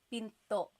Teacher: Do you hear the glottal stop when I say pinto?